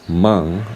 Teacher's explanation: what I hear usually when I hear the Japanese word mang is the ng sound, the velar sound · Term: final nasal velar sound